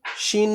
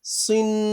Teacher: সিন দুই জের ছিল সিন পাতলা করে আর সদ দুই জের সিন মোটা করে